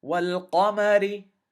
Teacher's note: Notice the lam has a sukoon on it. And the moon letter is going to be pronounced separately from the lam. The moon letter does not get a shadda on it.